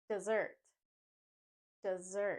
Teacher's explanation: instead of the S sound we drop that and add a z sound